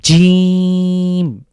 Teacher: বাংলা দাতব্য বর্ণ এটা তালব্য বর্ণ বলতে পারি অর্থাৎ আমাদের জীভের জীভের যে মাঝখানটা সেটা উপরের তালুর সাথে লাগবে